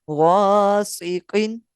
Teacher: قاف بھی حروف مستعلیہ میں سے ہے، یعنی پر یعنی موٹا پڑھا جائے گا